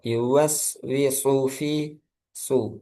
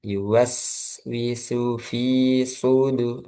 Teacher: sin ketika domah itu hati-hati jangan sampai terlalu tegang ya nanti kalau tegang seperti shad